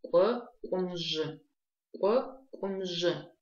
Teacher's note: Смотрите, букву «к», чтобы ее правильно произнести, нам нужно, мы произносим, то есть образуем этот звук от буквы «к» путем округления губ. Смотрите, попробуйте произнести букву «к» и при этом округляя губы.